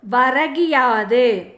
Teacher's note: அதாவது வரகு கூட்டல் யாது என்பதனை சேர்த்து எழுத கிடைக்கும் சொல் வரகியாது. முதல் சொல்லின் இறுதியில் உள்ள கூ என்னும் எழுத்து கீ என்று ஒலிக்கிறது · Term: குற்றியலிகரம்